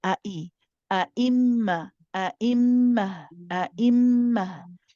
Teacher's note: We're doing nice and sharp at the beginning, stop the sound, and then restart for the hamza